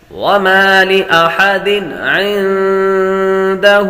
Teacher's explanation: یہاں نون پر غنہ کریں گے، نون ساکن کے بعد دال حروف اخفاء میں سے آ رہے تو غنہ کر کے پڑھیں گے